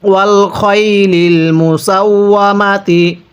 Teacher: অনেকেই খাইলিল পড়ি, খ জবর খা পড়লে পড়াটা সহি শুদ্ধ হবে না।